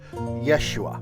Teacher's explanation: They just take the ho out of the middle because Yehoshua, it's a little difficult to say. But if you just say Yeshua, you sort of cut out a whole syllable and you make it flow easier.